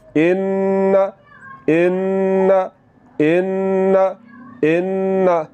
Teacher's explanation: आवाज़ को नाक में ले जाकर फ़ौरन छोड़ देना है।